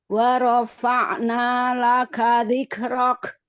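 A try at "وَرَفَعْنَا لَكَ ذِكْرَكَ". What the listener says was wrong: Ya, Masya Allah.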